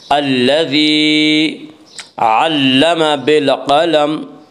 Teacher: قاف کو پر پڑھیں گے۔ قاف حروف مستعلیہ میں سے ہے۔